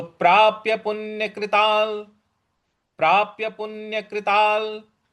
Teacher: कृता ता के ऊपर जो अनुस्वार है उसके आगे ल है तो हम इसको जोड़ करके बोलेंगे